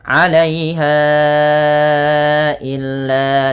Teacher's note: Maka ini wajib dipanjangkan empat harakat pada lafal bunyi ha atau lima harakat